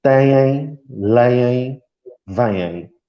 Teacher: o ditongo nasal duplo é, na verdade, o em, mas repetido. Dizemos duas vezes.